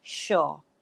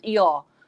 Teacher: the uh sound is replaced by the long o sound so it becomes your okay okay sure and the second word